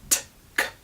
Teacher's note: Voiceless sounds, sounds that you make without engaging your vocal cords, like p, t, k, simply become voiced.